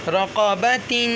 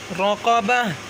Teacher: پڑھنے کی صورت میں تا اور وقف کی صورت میں ہا پڑھیں گے